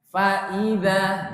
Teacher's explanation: saya termasuk sering menekankan Hamzah di tengah. Jangan sampai terseret, jangan sampai enggak jelas.